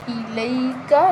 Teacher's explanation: لام کے آگے یا لین ہے، اس کو ہم بغیر جھٹکا دیے بغیر کھنچے نرمی کے ساتھ پڑھیں گے